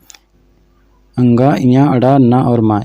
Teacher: मुख के साथ साथ नाक से भी निकलती है इनकी आवाज़ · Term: अनुनासिक